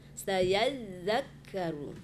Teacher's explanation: Za itu tasdidnya mengalir ya. Ya, enggak boleh terputus. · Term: tasdid za